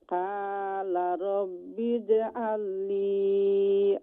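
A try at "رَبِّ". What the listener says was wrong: ওকে, ক্বালা ওই যে রব্বি কইনানি, রব্বি রা জবর র না রা জবর রা, রা রা রি রু, রাব্বি। আমরা এটা অনেক সময় আছে ওই জন্য একটু বাংলা স্টাইলে কইলে রব্বি, এটা রই তো নাই, এটা লিব রা রা রাব্বি।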